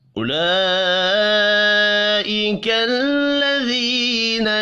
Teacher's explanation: उला लाम के ऊपर बड़ी मद है, 5 अलिफ के बराबर खींच कर पढ़ेंगे।